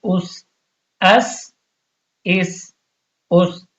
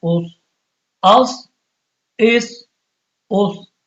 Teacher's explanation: اس اس اب سین اور صاد میں یہی فرق ہے کہ سین میں تھوڑا سیٹی کی آواز بنتی ہے اور صاد کو موٹا پڑا جاتا ہے مخرج دونوں کا ایک جیسا